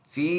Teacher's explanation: فی، یہ یا والا یا مدہ ہے جو لمبا ادا کرنا ہے ایک الف کی مقدار